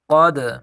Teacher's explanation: قاف دال زبر قد، یہاں ہم قلقلہ کریں گے دال میں، کیونکہ دال حروف قلقلہ میں سے ہے، اور حروف قلقلہ میں قلقلہ تب ہوتا ہے جب حروف قلقلہ ساکن ہو، یعنی ان کے اوپر جزم ہو۔